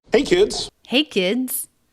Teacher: Friendly, upbeat, pitch is a little bit high, which to me gives it a more friendly tone.